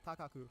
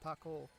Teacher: modify the word to end in an extended o or u